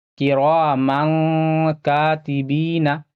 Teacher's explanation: یہاں پہ، اور یہاں پہ بھی الف سے پہلے زبر ہے، الف مدہ تھوڑا کھینچ کر پڑھنا ہے